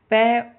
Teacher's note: पै ओष्ठ भी है, अघोष भी है और अल्पप्राण है